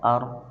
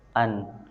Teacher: Jadi ro itu lebih ke dalam daripada nun dan lam.